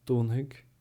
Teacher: the slender DH becomes a slender G